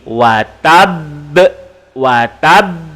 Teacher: Terjadi ketika waqaf dan ada tanda sabdu. Cara bacaannya berhenti dan lantun. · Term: qalqalah akbar